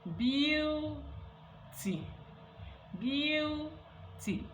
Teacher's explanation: In palatalization, the body of the tongue extends into the high front position. Okay, high front position, that portion called palatal, the palate.